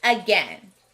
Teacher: two syllable words starting with a often have a schwa sound and that's what we hear in again